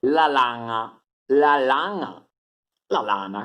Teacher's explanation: La N faucale è una N che è fatta con le fauci, per questo si chiama faucale, fauci. La N faucale si chiama anche N velare perché è fatta col palato e si pronuncia nga